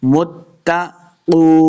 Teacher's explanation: یہاں پہ واو مدہ ہو رہا ہے، اس کو 2 حرکات لمع کر کے پڑھیں گے